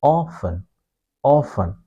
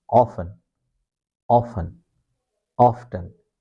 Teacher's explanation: American use a long O sound. Okay? They say often often here it's a short O sound.